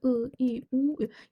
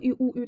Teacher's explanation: I, u, ü deyəndə ağzınız açılmır, dar olur, ağzınız qapalı olur. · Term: Qapalı saitlər